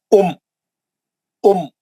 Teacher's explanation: بس رک جانا آواز. یہ جزم جا کے زبر کو پکڑا, بس ایک دم ٹھہر جانا آواز. کچھ بھی نہیں کھینچنا, اس کو لمبا نہیں کرنا, اس کو اوپر نہیں اٹھانا, نیچے نہیں اٹھانا, آگے نہیں لے جانا, کچھ بھی نہیں کرنا.